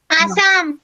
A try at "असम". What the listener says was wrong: आप हम लोग को आसाम नहीं बोलना, असम। आपको थोड़ा चबा के बोला असम, ऐसे नहीं, जीव को नहीं ऐसा करो।